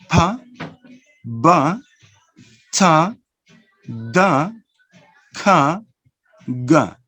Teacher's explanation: the first two sounds are bilabial